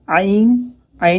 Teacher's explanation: عین حمزہ کی طرح نہیں نکالتے، عین میں تھوڑی سختی ہوتی ہے